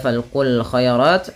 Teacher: ada alif lam qamariyah yang dimana huruf lamnya dibaca dengan jelas